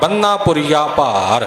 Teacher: ਬੰਨਾ ਪੋਲਾ ਨਹੀਂ ਬੋਲਣਾ, ਬੰਨਾ ਭਾਰਾ ਕਰਕੇ ਬੋਲਣਾ।